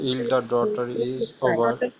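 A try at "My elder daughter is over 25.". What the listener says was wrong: Very good. Very good.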